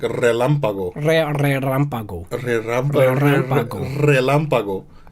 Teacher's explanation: we roll our R's in Spanish, so that's the difference